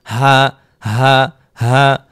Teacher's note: জিহ্বার আগা কোথাও লাগে নাই, শুরু থেকে বের হয়েছে হামজা হা · দেখেন, হলকের শুরু হতে, শুরু হচ্ছে এই যে গলার এখানে যে হাড়টা আছে আমাদের, এই হাড়ের শুরু। হলকের শুরু হতে হামজা হা